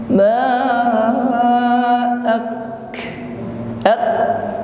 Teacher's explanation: Setelah ditekan disusul dengan nafas yang mengalir, ya, hamas. Aktsara. Jadi tidak tertahan sepenuhnya.